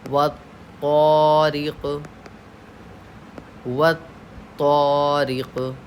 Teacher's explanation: यहाँ तौ पे तशदीद है। तशदीद की आवाज़ में एक किस्म की सख्ती होती है।